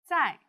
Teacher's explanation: The Z in 在 is pronounced like a D and Z together.